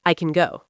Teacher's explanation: When we say can positive, we usually say it very fast and weak.